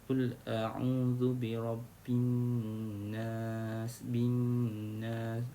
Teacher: Dia punya gunnahnya 2 harakat, cukup 2 harakat, tak payah lebih, tak payah kurang.